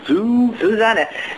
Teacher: the normal pronunciation of an S in German is like a Z sound. Z.